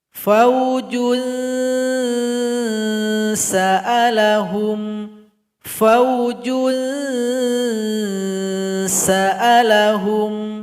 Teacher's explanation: Jadi bunyi ikhfanya harus mengarah kepada huruf sin. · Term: ikhfa awsat